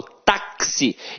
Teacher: o x aqui tem som de KS ou seja uma letra tem dois sons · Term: dífono